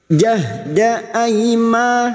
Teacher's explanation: huruf ha sukun harus ada tenaga ketika membunyikan huruf ha. Jahda aima ai fathah bertemu ya sukun huruf layin kita lunakkan.